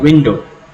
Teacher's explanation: in the word window, the syllable I, or rather the vowel I, is stressed